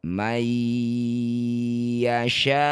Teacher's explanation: Nun sukun bertemu ya disebut bacaan namanya idgham bighunah. Masukkan bunyi nun pada ya may kemudian dengungkan dua harakat.